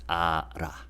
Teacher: this 받침, lil, gets moved over to the next syllable as in terms of pronunciation. So we pronounce it as ara. If you pronounce each letter, we would say al a, but in a sentence combined, it becomes ara.